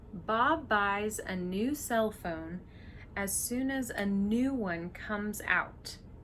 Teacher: so content words were stressed here Bob buys new cell phone new one comes out a is just a function word you don't need to emphasize